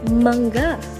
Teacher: Ang paraan ng artikulasyon sa letrang M ay pailong o nasal at ang punto ng artikulasyon ay panlabi o bilabial at ito ay may tunog.